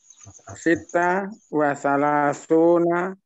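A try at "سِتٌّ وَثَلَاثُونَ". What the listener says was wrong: Situ, bukan sita.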